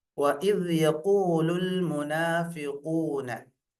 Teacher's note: காஃப் இஸ்திஅலாவுடைய எழுத்து, முஃபஹ்ஹமா தம்மா பெற்று வருகிறது. எனவே வல்லினமாக ஓதுவோம்.